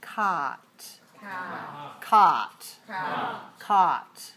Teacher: my tongue has to be lower for the sound ah my mouth is more open my jaw is lower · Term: low vowel